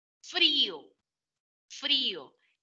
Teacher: fuerza de voz en la vocal cerrada al lado de una vocal abierta · Y merece colocarle una tilde inmensa, grande, porque si la fuerza de voz recae sobre la vocal cerrada, estando al lado una vocal abierta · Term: hiato acentual